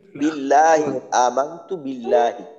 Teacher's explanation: আল্লাহ শব্দের লাম পাতলা